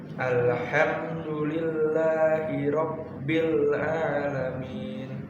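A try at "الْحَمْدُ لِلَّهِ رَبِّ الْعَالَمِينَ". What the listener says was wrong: Haluskan haknya, panjangin belakangnya. Alhamdulillahi rabbil alamin. 6 harakat mikir lah.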